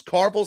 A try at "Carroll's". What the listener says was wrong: Carroll's. Carrell's, yeah. No, it's Carroll's. No, there's no V. Carels. Carels. Carroll's.